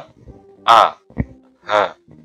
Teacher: Tenggorokannya ada 3, yaitu bagian bawah a dan h